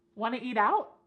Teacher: You want to eat out? Or we could cut off that first word y completely and just say want to eat out.